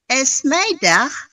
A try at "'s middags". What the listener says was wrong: Bukan esmedah. Bukan esmedah. Jadi S-nya itu disambung. Smiddag.